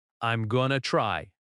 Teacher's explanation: Notice the stress on try. The word going to is quick and light.